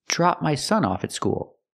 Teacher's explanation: We have to use the short a sound like hot and stop. It's more open. I can't say drop with the closed sound. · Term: short ah sound